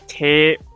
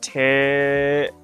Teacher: So you just if you just heard me extend the vowel of the te, so it's tape. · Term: vowel extender